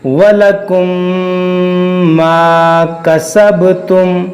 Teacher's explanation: बा कलकलाह का एक अक्षर है और यह साकिन है, इसलिए हम इसमें कलकलाह करेंगे।